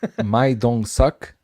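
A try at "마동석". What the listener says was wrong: Ma Dong-seok. M-A, dude, not my. It's Ma. There's a whole difference. If you say Ma, it sounds wrong.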